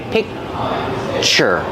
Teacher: I have the k sound, but I don't release it. So it's a stop sound. I stop the air.